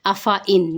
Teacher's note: فا کے آگے الف ہے اس کو لمبا نہیں کریں گے